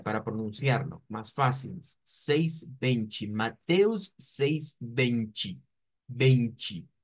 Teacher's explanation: Esto suele utilizarse siempre cuando la T está acompañada de la E. Siempre que vemos las T's con E, en Brasil las convierten en CH en ch y en una i. Entonces, si transliteráramos lo que vendría siendo el número 20, nos saldría algo como bench, vea, para pronunciarlo, más fácil. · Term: sonido CH